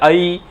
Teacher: कंठ से ध्वनि निकलती है, तालु से की तरफ जीभ जाती है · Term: कंठ तालव्य